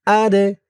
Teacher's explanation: দাল কলকলার হরফ ধাক্কা দিয়ে পড়তে হবে